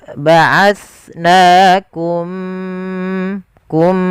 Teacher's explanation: mimnya masukkan ke huruf mim kedua dan ditahan gunnahnya. Ya, ba'atsnakum, kum, dan bibir kita rapatkan. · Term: Idgham mimi